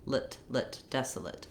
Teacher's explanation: You might see it with an I or a schwa here in the IPA. Desolate, it's a reduced vowel, and so again, kind of moving quickly from the L, the lifted L, to the T